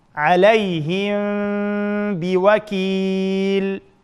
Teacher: sakinlik mimning keyindan b harf kelsa, shu sakinlik mimni yushirib, g'unna bilan birga talaffuz qilamiz. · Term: ixfa